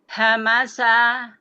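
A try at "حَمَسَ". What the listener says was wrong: Itu karakter tengah-tengah tenggorokan. Ha. Hamasa. Masih sedikit lagi, diturunkan sedikit lagi makhrajnya. Asal suaranya diturunkan sedikit lagi. Ha. Hamasa.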